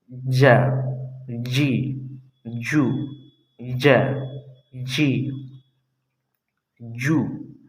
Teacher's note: زبان کا بالکل درمیانی حصہ، یہ زبان کا درمیانی حصہ یعنی بیچ کا حصہ، اسی کے سامنے بالکل اوپر تالو سے جب ٹچ ہوتا ہے تو پھر وہاں سے جیم ادا ہوتا ہے۔ یعنی زبان جو جیب ہے، زبان ہے، زبان کے بیچ کا حصہ اسی کے سامنے اوپر کے تالو سے، یہاں سے جب ٹچ ہوتا ہے تو یہاں سے جیم ادا ہوتا ہے۔